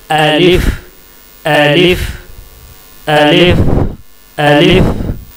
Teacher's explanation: अलिफ अलिफ अलिफ ये मुंह के खाली हिस्से से निकलता है। मुंह के जो अंदर का खाली हिस्सा है उस खाली हिस्से से अलिफ निकलता है।